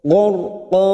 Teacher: Gharqa ada ra sukun yang didahului fathah. Kita baca tafkim tebal.